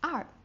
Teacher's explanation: the fourth tone, which goes down very quickly